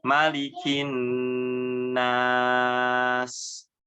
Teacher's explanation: Ya, jadi ditahan dulu ketika huruf nun yang bertasydid. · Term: gunnah